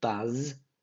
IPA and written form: bʌz (buzz)